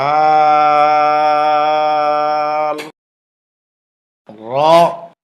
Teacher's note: জিহ্বার আগার পিঠ উপরের তালুতে লাগবে, মোটা হবে, বাংলা আকার প্রকাশ পাবে না।